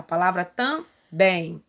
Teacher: mostrando pra gente que a sílaba mais forte é o bem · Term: Oxítona